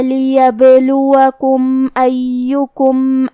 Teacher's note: یا پہ تشدید ہے تو ہمیں 2 حرف کے برابر یا کو پڑھنا ہے